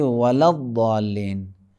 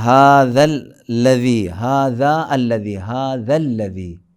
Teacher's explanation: زال کو لام سے ملائیں گے